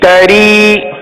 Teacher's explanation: را کو باریک پڑھیں گے کیونکہ را کے نیچے زیر آپ کو نظر آ رہا ہے